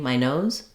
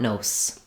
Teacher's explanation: If I'm just saying my nose, I'll have kind of that weak Z sound. I just want to avoid a strong S.